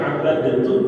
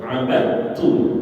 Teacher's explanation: Karena dia hukumnya idgham mutajanisain. Ketika ada huruf dal bertemu dengan ta, dalnya mati, taknya hidup, dalnya nggak usah dibaca, langsung dimasukkan ke huruf ta.